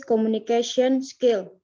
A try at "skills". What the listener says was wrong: Kenapa S-nya selalu kamu tinggal? Skills. Ya, S itu adalah huruf yang kalau di belakang selalu dibaca.